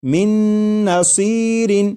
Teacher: جیسے یہ لکھا ہوا ہے من، لیکن جب نون ساکن کو نون میں ادغام کرنا ہے تو پھر یہ جو نون ساکن ہے اس کی آواز ختم ہو جائے گی، اور میم کے بعد نون مشدد جو ہے اس کی آواز آئے گی اور غنہ کے ساتھ پڑھیں گے